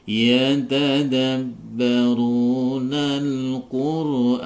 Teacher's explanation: Di sini ada bacaan panjang dua harokat bertemu dengan huruf hidup na yang dibaca waqaf sehingga na ini akan berharokat sukun, nunnya akan menjadi berharokat sukun, sehingga bacaan asalnya dua harokat bertemu dengan huruf hidup yang dibaca waqaf menjadi dipanjangkan 6 harokat